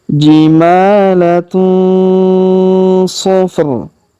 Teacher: tanwin un, huruf tun ya, bertemu dengan huruf su maka kita dengungkan dan kita samarkan cara bacanya. Jimalatu sofr, huruf tanwin un, huruf run di ujung kita sukunkan.